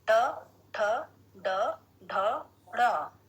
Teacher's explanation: ट वर्ग, ट ठ ड ढ ण, मूर्धा, अर्थात हमारी जिह्वा मूर्धा को स्पर्श करती है